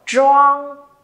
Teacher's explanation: Trang thì không có bật hơi nhá, cong lưỡi thôi.